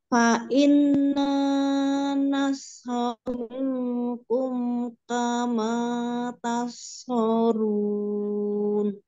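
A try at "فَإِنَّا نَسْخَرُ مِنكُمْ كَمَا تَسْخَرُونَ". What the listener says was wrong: Nah, sempurna ya, tinggal fa inna tadi gunahnya kurang, fa inna Nanya kepanjangan tapi nunnya yang lama ya, fa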